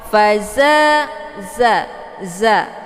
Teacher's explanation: Jadi sofir itu anginnya lebih jelas kalau dibandingkan dengan yang sifatnya hamas ya. Faza ditekan, faza ya, dia posisinya ujung lidah dengan uram gigi bawah ya.